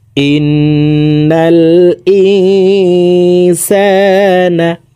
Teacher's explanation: নুন সাকিনের পরে ইকফার হরফ সিন আসছে, এই কারণে এই নুন সাকিনকে নাকের ভিতরে লুকাইয়া গুন্নার সহিত পড়ব। সিন আলিফ জবর সা, নুন জবর না, ইন্নাল ইনসানা। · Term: ইকফাহ গুন্না